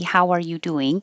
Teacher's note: you put the emphasis on how and do